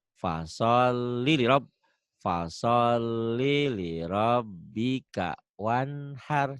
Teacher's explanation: Li-nya jangan panjang. Segera ke lam berikutnya.